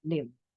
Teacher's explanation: Cuando yo digo live, como que es dental. Yo muerdo mi labio inferior. Obviamente no va a ser una mordida muy, como que, no sé, como muy fuerte, ¿verdad?